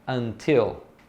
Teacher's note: Nesse caso você tem que falar o T porque ele é a sílaba tônica da palavra, ele está no início de uma sílaba tônica.